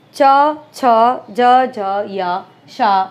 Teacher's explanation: अग्र भाग कठोर तालु को स्पर्श करता है च, छ, ज, झ, य, श बोलते समय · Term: तालव्य